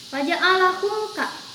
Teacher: Mim mati menghadapi huruf kaf. Ini adalah contoh dari izhar syafawi, dibacanya harus jelas.